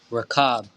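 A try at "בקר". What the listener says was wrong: You ready? We got it backwards. Bakar. Bakar.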